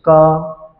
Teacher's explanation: વ્યંજન પાછળ ક તમે બોલો છો તો ક્યાંકને ક્યાંક મંદ ઉચ્ચારણ અ નું થાય છે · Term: લઘુ